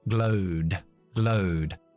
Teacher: Terminando en ed, después del sonido sonoro O, yo pronuncio una D, porque es sonoro. Glowed. Esa D me lo llevo a la I de in.